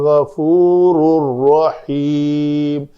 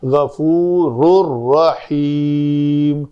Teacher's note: ہی غفور رحیم، یعنی نون بالکل ختم کرنا ہے، غفور رحیم۔ تنوین کے بعد لام اور را میں سے کوئی آ جائے تو اس کا ادغام کامل ہو جاتا ہے، مکمل ادغام ہو جاتا ہے، نون سننے میں باقی نہیں رہنی چاہیے۔